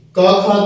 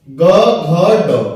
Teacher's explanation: क खा तो अघोष हो गया, ग घ ड सघोष हो गया